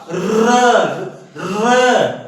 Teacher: जीभ में कंपन होगा वाइब्रेशन होगा · तो यही र हमारा लुंठित या प्रकंपित व्यंजन होगा